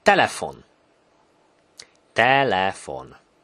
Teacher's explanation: a high-pitched sound, so it's definitely a front vowel word